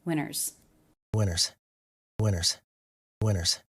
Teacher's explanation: He's dropping the T, winners.